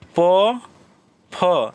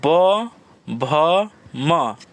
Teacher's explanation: देखिए ओठ में दोनों ऊपर नीचे सट रहा है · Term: ओस्ट, ओष्ठ वर्ण